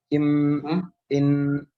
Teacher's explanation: dia keluarnya dari khaisum, atau kita menyebutnya adalah rongga hidung, dan dia seolah-olah dendangan atau seolah-olah sebuah gumaman yang keluarnya dari daerah rongga hidung dan tidak ada kaitan dengan lisan, tidak ada kaitan dengan lidah. · فهي تخرج من الخيشوم ولا عمل للسان فيها إن هكذا. نعم. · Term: gunnah, الغنة